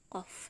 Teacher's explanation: Qaf itu dari pangkal lidah bertemu dengan langit-langit mulut yang bagian lunak, qaf. Sedangkan kaf pangkal lidah bertemu dengan langit-langit mulut yang bagian keras, ak, ka, seperti itu.